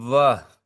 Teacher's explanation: थोड़ा सा दांत भी टच हो रहा है, थोड़ा सा होंठ भी टच हो रहा है, तो दांत और होठ दोनों ही इसके उच्चारण स्थान हुए। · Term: दंतोष्ठम